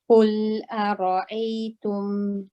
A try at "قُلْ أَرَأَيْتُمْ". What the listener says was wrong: Yes, you're tensing a little bit when you're saying this Hamza. The first one's not too bad, but the second Hamza, you're tensing a little bit. So ara, then relax. قُلْ أَرَأَيْتُمْ.